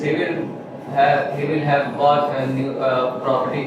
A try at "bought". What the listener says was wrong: What is but? It's bought.